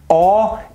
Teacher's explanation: is pronounced with rounded lips and is an open mid-back rounded vowel